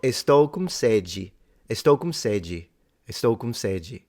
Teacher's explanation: the D became a G sound